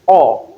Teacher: Number 6, which is O, is described as short low back rounded vowel